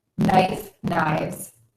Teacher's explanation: For some common words ending in an F or an FE, you're going to have to change the F to a V, then add an S to make it plural, which changes our rule, as we know, because then we must say a Z sound when we end that word in a V sound